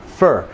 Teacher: We say it quickly, and the character of the vowel diminishes, as in no vowel.